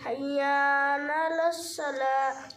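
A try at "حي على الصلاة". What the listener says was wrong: नून नहीं, हय्या अलस्सलाह।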